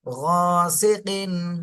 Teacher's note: এখানে তানভিনের পরে ইজহারের হরফ আসছে, এই জন্য তানভিনে স্পষ্ট করে পড়তে হবে।